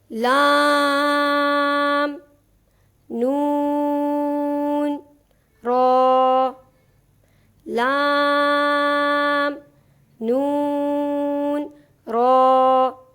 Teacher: پھر اس کے بعد حرف نون کے مخرج میں طرف لسان سکڑ کر ثنایا، ربائی اور انیاب تک رہ جاتی ہے، اور آخر میں حرف را کے مخرج میں طرف لسان مزید سکڑ کر صرف ثنایا اور ربائی تک محدود ہو جاتی ہے۔